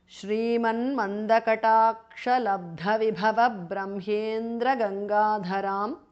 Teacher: Shrimat, the T changes to N because of Sandhi.